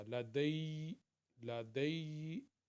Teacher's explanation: اگر ہم اس کے اوپر وقف کریں گے پھر اس کا ایک یا پڑھا جائے گا، دوسرا سکون والا ہو جائے گا